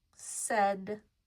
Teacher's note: But the A and I do not follow the 2-vowel rule. The A is not long, and we don't hear the I at all. We hear an eh sound. We hear S, we hear D, but these do not follow the rule.